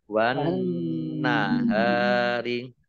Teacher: Nun langsung masuk ke huruf berikutnya yaitu nun, ditandai nunnya ada tasdidnya. Nun tasdid dibaca gunnah atau mendengung, dibaca ditahan dua harokat.